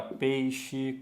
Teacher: na palavra peixe Eu tenho um ditongo mas ele é decrescente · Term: ditongo decrescente